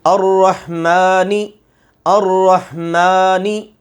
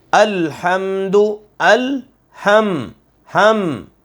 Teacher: ان کو ادا کرتے وقت ناک میں آواز جائے، آواز میں گنگناہٹ پیدا ہو، لیکن یاد رہے ان کے علاوہ کسی بھی حرف کو گنگنی آواز سے نہیں پڑھنا. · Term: حروف غنہ